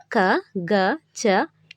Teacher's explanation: క గ చ ట డ త ద ప బ వంటి అక్షరాలను తేలికగా పలుకుతాం. వీటిని అల్ప ప్రాణాక్షరాలు అంటారు.